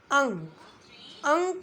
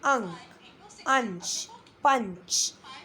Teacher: अनुस्वार के उच्चारण में नाक से अधिक आवाज़ या सांस निकलती है, मुख से नहीं निकलती। जैसे अंक, अंक में अ से नहीं निकल रही, मुंह से नहीं निकल रही है, नाक से मिल रही है, निकल रही है अंक।